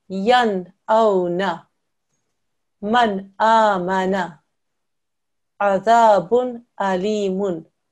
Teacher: If it's one of these letters, an alif, a hamza, ha, ayn, ha, ghain, kha, then the nun sakin or the tanween is a clear sound. You make no nasal sound.